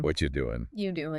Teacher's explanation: the auxiliary verb are, it's often reduced dramatically. Sometimes it almost disappears completely in really casual fast speech. It becomes just a little schwa sound like sure or sometimes nothing.